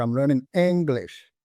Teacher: stressing on the word English it means that I'm learning English not French not German